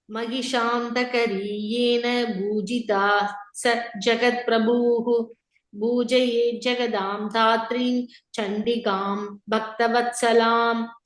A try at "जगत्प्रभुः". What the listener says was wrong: In the Jagat Prabhu, short U, last word.